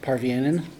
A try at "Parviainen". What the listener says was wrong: Parviainen. triple vowels, extra vowels. In the middle.